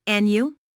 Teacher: Notice the rising intonation on and you.